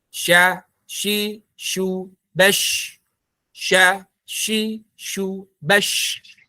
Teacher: Kalau shin nanti ada sifat tafasyinya dia. Ada udara yang mengalir. Ya, ada hembusan udara yang kuat.